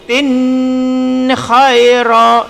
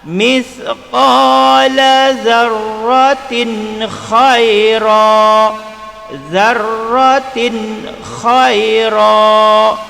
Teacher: Jadi tin ini kena baca jelas, tidak boleh dibaca dengung. Kalau baca dengung jadi tin khaira, salah. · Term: izhar halqi